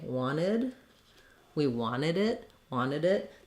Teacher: they just leave that tee off